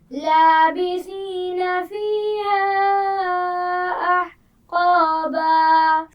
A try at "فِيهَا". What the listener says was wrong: فیہا، ہا کے مخرج کو واضح کیجیے.